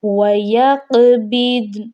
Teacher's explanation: نون کو ہم نے صرف ہلکا سا ہی ظاہر کرنا ہے اور وقف کرنا ہے یہاں پر